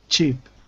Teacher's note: Imagine there's a T at the beginning of the word cheap.